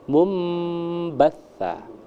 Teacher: Dengan kedua mulut tertutup. Mumba karena ba itu syafatun, kedua bibir ini dia tertutup. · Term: iqlab